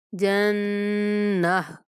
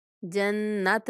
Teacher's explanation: گول تا کے اوپر جب بھی وقف کیا جاتا ہے اس کو ہا سے بدل دیتے ہیں